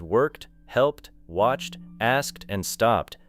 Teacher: In words such as worked, helped, watched, asked, and stopped, the ending may be a short T sound.